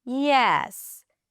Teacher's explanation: falling intonation starting high and dropping down